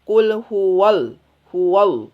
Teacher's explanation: Dan jangan lupa, jangan juga ada huruf siluman. Kebanyakan yang kesalahan ketika mengucapkan Al-Ikhlas, ada huruf siluman, yaitu ada huruf waw, disisipkan huruf waw.